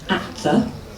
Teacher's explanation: When you then join at the, you take you move the tongue forward so that it touches the teeth, so that it's already in the correct position for you to do the TH immediately afterwards. This speeds the whole process up, it's much more natural.